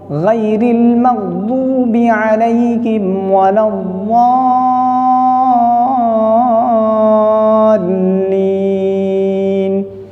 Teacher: زبان کے کنارے کو اوپر کی ڈاڑھ کی جڑ سے لگا کر اس سے ضاد نکلتا ہے. دونوں جانب سے نکالنا صحیح ہے لیکن بہت مشکل ہے.